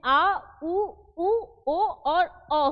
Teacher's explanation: मध्य स्वर में क्या है, अ है। वहीं पश्य स्वर में जीभ का पिछला भाग जो है वो प्रयोग में लाया जाए